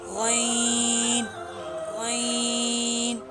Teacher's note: غین بھی حرف حلقی میں سے ہے اور یہ حلق کے شروع والے حصے سے ادا ہوتا ہے، یعنی کہ جو حصہ منہ کی طرف آتا ہے، غین غین۔